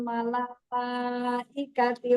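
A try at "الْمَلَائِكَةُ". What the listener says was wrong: Malaikatu bukan malaikati.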